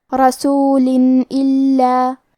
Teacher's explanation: کلمت رسول کے آخری میں لام کے نیچے تنوین زیر ہے، پھر حرف الالف ہے کلمت اللہ، الف حروف الاظہار میں سے ہے تو ہم تنوین کو ظاہر کریں گے اور بغیر غنہ سے یہ حکم کو ادا کریں گے